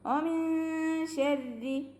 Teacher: ഇഖ്ഫായ് ചെയ്തിട്ട് നൂനിനെ മറച്ച് വെച്ചിട്ട് മണിച്ചോതുക. ഓമിൻ ശരി നാവിൻ്റെ മുകളിൽ തട്ടിക്കാതെ നൂനിനെ മറച്ച് വെച്ചിട്ട് മണിച്ചോതുക കേട്ടോ.